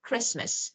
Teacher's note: we don't pronounce letter T